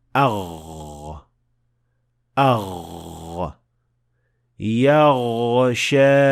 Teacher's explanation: Number one, notice that I said the root of the tongue is almost touching the soft palate, not fully touching, because the sound of ghain is a continuous sound, which means that it can be extended for as long as you want.